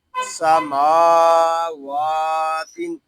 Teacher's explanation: یہاں میم اور واو دونوں کو ایک الف تک کھینچ کر پڑھیں گے کیونکہ یہاں کھڑا زبر ہے۔ میم کو جب ادا کریں گے تو کوشش کیجیے ناظرین کے ناک میں آواز نہ جائے، اس کو سماوات نہیں پڑھیں گے، اس کو پڑھیں گے سماوات، اور وقت میں یہاں ہوگا سماوات، اور وقت میں یہاں مد عارض ہوگا اور وقف مطلق۔